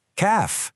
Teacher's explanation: But there's a tiny subtle difference. In Arabic, the calf isn't aspirated.